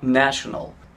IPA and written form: ˈnæʃənəl (National)